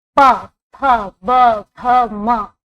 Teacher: दोनों ओठों से, क्योंकि हम जब प बोलते हैं तो ओठ टच हो रहा है